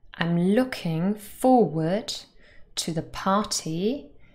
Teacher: we stress look. In looking, for in forward, and par in party. So there are three words that are stressed.